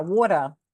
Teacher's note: There's rules to African American English, Philadelphia E's, New York E's. Like I'm allowed to drop the schwa instead of saying the ER